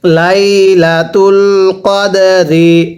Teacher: দালটা কলকলা করে পড়ব